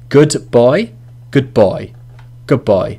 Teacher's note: Da gets assimilated with ba.